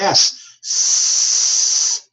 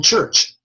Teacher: now say the letter s no vibration say the letter F no vibration say the letter CH as in church no vibration